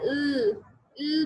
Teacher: यहाँ पे देखें साउंड है ल बोले, जब आप एल बोलते हैं, ल बोलते हैं, तो क्या होता है, आपकी जबान की टिप जो है वो अपर टीथ के साथ लगती है। आपका क्लोज हो गया, ठीक है, वो जो पैसेज ऑफ एयर स्ट्रीम है वो सारा क्लोज हो गया, लेकिन दरमियान से हुआ, साइड से आपकी आवाज फिर निकलती है। · ल बोले तो साइड से आप देखें सारी एयर स्ट्रीम साइड से निकल रही होती है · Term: लेटरल्स